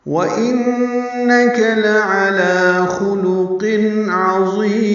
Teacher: خلقن قاف پر ہے اور تنوین کے بعد عین آنے کی وجہ سے اظہار ہے.